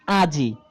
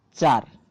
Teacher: এই যে শব্দের শেষ থেকে একটা স্বরধ্বনি লোপ পেয়ে যাওয়া সেটাই হচ্ছে অন্ত স্বরলোপ